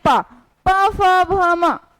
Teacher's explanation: ठीक है, अब आते हैं प फ भ म, ये ओष्ठ यानी हमारी जो लिप्स है वो दोनों क्या हो रही है, टच हो रही है, जुड़ रही है